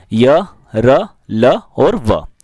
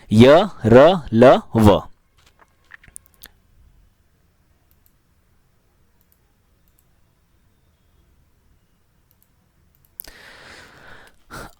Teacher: जिन ध्वनियों के उच्चारण में वायु मुख से घुमड़ कर बाहर निकलती है तो उन्हें अंतस्थ व्यंजन कहते हैं।